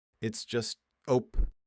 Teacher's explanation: If you've ever tried to squeeze past someone in a narrow hallway, you may have involuntarily emitted a short, sharp burst of air that sounds something like. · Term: the opi maneuver